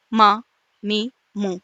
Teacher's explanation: ہونٹوں کا ڈرائی حصہ آپس میں مل رہا ہے جس کی وجہ سے میم ادا ہو رہا ہے